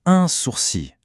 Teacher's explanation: Le L à la fin est complètement muet, on ne l'entend pas du tout.